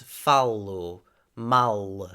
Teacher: that resulted in the very Veer strong or dark l sound that we hear in European Portuguese